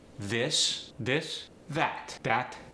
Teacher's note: the voice TH sometimes becomes a D